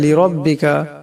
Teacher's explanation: লিরাব্বিকা লামের উপর জবর আছে, তাই লামকে মোটা আওয়াজে পড়তে হবে